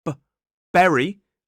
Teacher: It's the B in berry, which is a plosive sound, a bilabial plosive